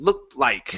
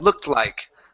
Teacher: basically hiding that T within the L